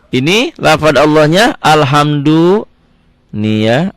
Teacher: lafadz Allah nya dibaca tipis karena persis dibawah garis dibawah huruf yang pertama ada kasrah